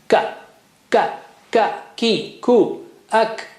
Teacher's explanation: It's just like K of English. Touch the inner part of the tongue to the roof of the mouth right at the back. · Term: kaf